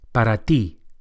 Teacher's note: the Spanish T is also softer than English and produced with the flat of the tongue against the gum ridge. Para ti, not para ti, but para ti.